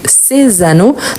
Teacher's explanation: vous voyez que le S, il apparaît avec les sons de Z. Ces anneaux pour faire la liaison.